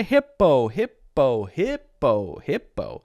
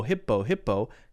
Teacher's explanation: that word hippo, hippo, hippo clearly has an I and clearly has an O. So it doesn't have any schwa sounds.